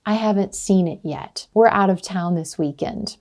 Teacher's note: when you say a statement, your pitch is going to fall at the end